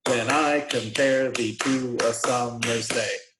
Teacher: it's iambic pentameter. And that means that it goes unstressed, stressed, 5 times a line.